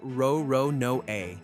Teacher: Japanese doesn't have an L sound at all. The L and the R collapse into one single row of syllables. So L'Olonnais, run through Japanese, comes out Ro-Ro-No-A.